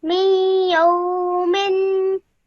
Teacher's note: Remember the tanween sound at the end, the gunna sound, hold it for 2 seconds.